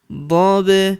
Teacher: Huruf ba berharakat sukun kita pantulkan atau kita qalqalahkan